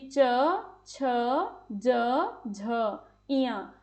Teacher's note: जैसे कि च झ। तो इन्हें बोलते समय जीभ का अगला भाग तालू को छू रहा है या उसके निकट आ रहा है। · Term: तालव्य व्यंजन